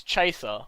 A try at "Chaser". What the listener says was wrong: Chaser or Chafer? Okay, I was gonna say chafing is something completely different. you said chafer?